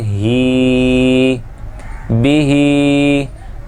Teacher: یہ ہا جو ہے وہ حلق کے نیچے والے حصے سے جو سینے کے ساتھ متصل ہے، اس کی آواز سینے سے پیدا ہوتی ہے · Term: ہاتھی والا ہا